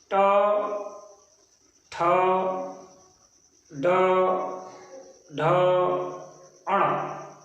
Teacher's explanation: इसी प्रकार हिंदी वर्णमाला का ट वर्ग ट, ठ, ड, ढ, अण, ये मूर्धन्य कहलाता है क्योंकि इसका उच्चारण मूर्धा से अर्थात मुंह के अंदर की छत के अगले भाग से होता है